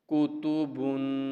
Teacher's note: کاف پشکو، تا پشتو، کوتو، با دو پشبن، کوتوبن، ٹھیک ہے، پہلے دونوں حروف حرکات والی تختی میں سے ہیں اس لیے ان کو نہیں کھینچیں گے اور تیسرے حرف پر ہم غنہ کریں گے